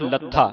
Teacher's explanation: ਇਹ ਲੱਥਾ ਭਾਰਾ ਬੋਲਣਾ ਇਹਨੂੰ ਅਧਕ ਲਾ ਕੇ ਉਚਾਰਨ ਕਰਨਾ